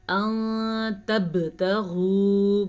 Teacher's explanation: با پہ کلکلا ہو رہا ہے کیونکہ با پہ جزم ہے اور یہ واو مدہ ہے.